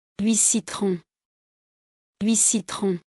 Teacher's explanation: Before a consonant, T is silent.